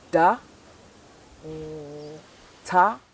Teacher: Again, the placement is the same. And ta and da are said in the same places in the mouth